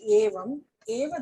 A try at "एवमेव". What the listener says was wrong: Evam eva. No, you have to say evam eva. Evam eva. It's together.